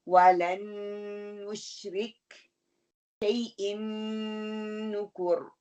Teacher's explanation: शैइन नुकुर के नून के ऊपर पकड़ के रखना है, दोनों पे फुल गुन्ना हो रहा है